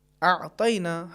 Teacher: حرف عین کا جو مخرج ہے وہ وسط حلقے یعنی گلے کا جو درمیانی حصہ ہے، یہ وہی مخرج ہے کہ جو حرف ہا کا بھی ہے.